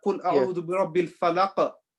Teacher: if a qaf has a sakin, you have to do qalqala, you have to bounce your voice like qul a'udhu bi rabbil falaq, like that.